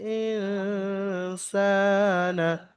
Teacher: এবং সিনের উপরে এক আলিফ পরিমাণ, সিনকে এক আলিফ পরিমাণ টান দিয়ে পড়তে হবে, কারণ সিনের উপরে খারা জাবার এসছে